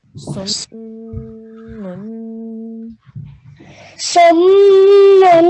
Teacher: Make sure we hold on the meme sound for 2 seconds. So that nasal sound for 2 seconds. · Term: meme gunna